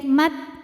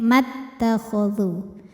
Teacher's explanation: Ma jika berhenti hukumnya mad tabi'i zahiri karena ada alif didahului harokat fathah, maka kalau berhenti 2 panjangnya ma. Namun jika diwasolkan mimnya jadi pendek, mat, gugur alifnya, namanya takhallus bil hadfi.